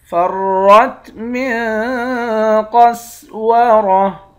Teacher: را کو موٹا پڑھیں گے، نون پر اخفا کریں گے، قاف اور را ان دونوں حرف کو موٹا پڑھیں گے